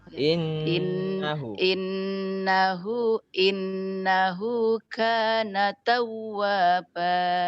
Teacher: jadi nun double, nun tasdid itu lebih panjang dari kana. Ka itu hanya 2.